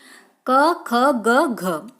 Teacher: ये कंठ से बोले जाते हैं।